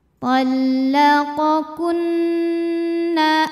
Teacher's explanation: Sebab nun bertasydid. Cara bacanya didengungkan bunyi n, tahan dengungannya kurang lebih 2 harokat. Tallaqakunna Hukum tajwidnya adalah idgham bi gunnah karena ada nun sukun menghadapi huruf ya. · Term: gunnah musyaddadah